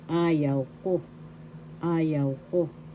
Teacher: The first and the third has the accent.